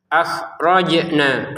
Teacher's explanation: Khnya di sini ya. Jangan dipantulkan. Jimnya yang dipantulkan.